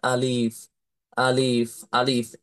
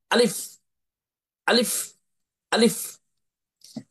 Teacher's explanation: কণ্ঠনালীর প্রথম থেকে বা গলার শুরু থেকে জোরে সোরে দ্রুততার সহিত ধাক্কা দিয়ে ধমকের সুরে জোরে সোরে বলতে হবে